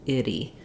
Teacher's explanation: So I'll rewrite that flap here for you with a D. We don't want a strong D there, but we do have the voice on and a little flap up. Itty. So in words that end with ity, you want to watch out for making sure you have a lax I and then a tense E, even though they both go by fast. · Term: flap T